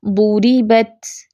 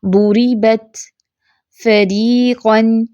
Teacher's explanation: الراء المرققہ، اس میں پیچھے سے زبان جو ہے جڑ سے اوپر نہیں ہے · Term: را مرقق